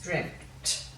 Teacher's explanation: Sounds, just be aware, it sounds like there's a P there, but there's not. Your mouth nearly goes to form the P, but there's no P. It's dreamt.